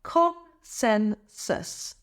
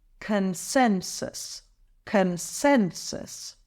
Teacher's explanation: Emphasize the second syllable, sen.